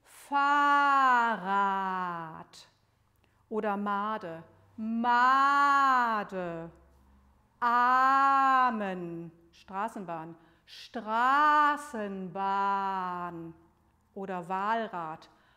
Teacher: Wir sagen jetzt, um das zu üben, einfach Worte mit langem A und machen dabei den Mund weit auf